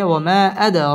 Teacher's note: দাল কলকলার হরফ ধাক্কা দিয়ে পড়তে হবে